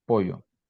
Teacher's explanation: Le L et le Y sont prononcés comme une consonne fricative palatale voisée